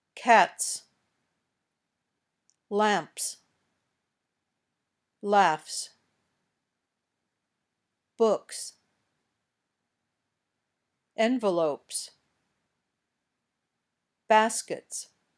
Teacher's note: the ending sounds like s. We don't add an extra syllable to the word.